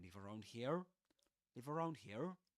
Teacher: indicating it's a question using this rising intonation